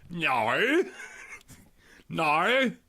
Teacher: I love the way Australians say no. They use every vowel in the alphabet in order.